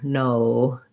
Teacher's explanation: we're gonna want to hold it longer go from that tense o to a more relaxed uh so you're closing and going relaxed as you go usually